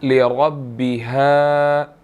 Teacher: وَأَذِنَتْ لِرَبِّهَا، را کو موٹا ادا کریں گے، را کے اوپر زبر ہے، ٹھیک ہے، اور آگے جو با ہے را اس کے ساتھ مل رہی ہے، لِرَبِّهَا، ٹھیک ہے۔ اسی طرح ہا کے بعد جو ہے وہ جو الف ہے اس کو ہم نے 1 سیکنڈ تھوڑا سا کھینچنا ہے